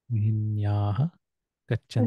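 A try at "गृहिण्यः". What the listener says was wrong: There is no yaha, okay? Grihinyaha.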